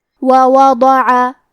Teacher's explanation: ضاد کی ادائیگی زبان کے کروٹ اور اوپر کے داڑھوں کے جڑ سے ہے. حرف الضاد حروف التفخیم میں سے ہے تو ہمیں یہ حرف کو بھاری آواز میں پڑھنا ہے.